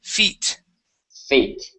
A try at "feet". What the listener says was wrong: there you go nice job